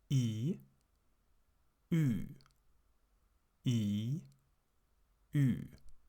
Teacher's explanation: you speak the German I or the English I and round your lips. Close your mouth a bit more. If you do this correctly, you produce the Ü.